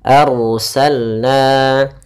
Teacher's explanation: ada ro yang didahulukan dengan huruf fathah, maka ro-nya tebal, jangan dibaca arsalna tapi dia arsalna.